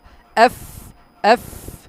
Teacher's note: এফ এর উচ্চারণটা হবে উপরে দুই দাঁত, নিচে ঠোঁট, অর্থাৎ ফায়ের মতো বা ফয়ের মতো, এফ এফ।